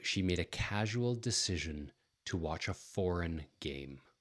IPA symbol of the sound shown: ʒ